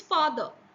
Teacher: the P sound changed to F which is a voiceless fricative